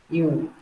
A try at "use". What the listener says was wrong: Có S, có Z nhá. Use.